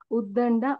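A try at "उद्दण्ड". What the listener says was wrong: Udang Avritihi. Dakaraha nasti tatra. Pashyatu tatra binduho asti kila. Dakaravat rupam parantu binduho asti ched ngakaraha. Ka kha ga ga nga. avritihi. So first, actually you're right. First we should say, there is ngakara.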